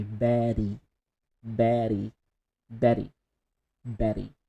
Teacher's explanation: instead of using the t sound the tata betty you can use the american accent change t to d but very fast